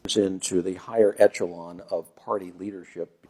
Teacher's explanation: So he said echelon with the CH sound.